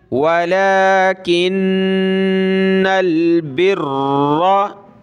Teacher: नून पे गुन्ना होगा तशदीद की वजह से, और नून को लाम के साथ मिलाना है। काफ ज़ेर की, काफ नून ज़ेर, किन नून लाम ज़बर नल, किन्नल बिर्रा, वलाकिन्नल बिर्रा।